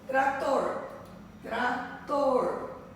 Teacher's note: Onde a última sílaba é a mais forte, ou a última sílaba está acentuada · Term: oxítonas